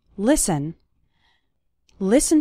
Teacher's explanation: the letter t is silent in the word listen